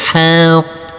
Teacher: huruf qof yang bertasdid ini harus kita tekan kita tahan baru kita pantulkan. Jadi tidak boleh langsung kita pantulkan karena ini huruf qof bertasdid.